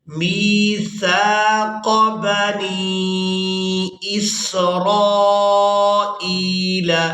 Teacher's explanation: را کو الف مدہ اور مد کی وجہ سے کھینچ کر ادا کریں گے۔